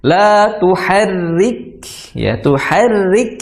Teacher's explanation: kalau kita menemui ro tasdid, harokatnya kasroh, maka bunyi ro-nya harus langsung masuk ke tipis seperti itu.